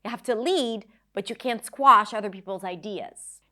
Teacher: the stress words are lead, squash, ideas.